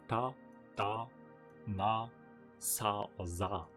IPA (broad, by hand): ta, da, na, sa or za